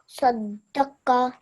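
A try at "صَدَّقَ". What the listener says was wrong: Oh, nice, nice, very nice.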